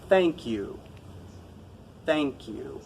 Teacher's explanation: I'm putting my tongue between my teeth but I'm not pushing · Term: th sound